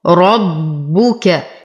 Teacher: نشد الباء ونتم ضمتها ونفخم الراء